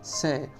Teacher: और इस स को बोलेंगे तो आपकी जिह्वा है वो आपके दांतों से स्पर्श करेगी